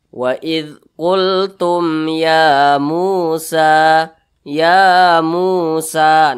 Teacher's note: Nah, jadi ini karena di atas huruf ya ada alif kecil yang berdiri, maka ya-nya ini dibaca panjang. Panjangnya itu dua harokat atau kira-kira dua ketukan. Namanya mad tabi'i.